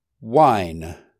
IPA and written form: waɪn (wine)